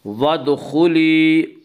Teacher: خا کو پر پڑھیں گے، خا حروف مستعلیہ میں سے ہے۔